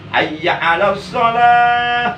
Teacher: Hayya 'alas shalah, udah cukup ditekan saja, jangan didengung. Karena itu hukumnya bukan idgham biguna, karena sebelum iya tidak ada nun mati, sebelum iya tidak ada tanwin. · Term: mudhoaf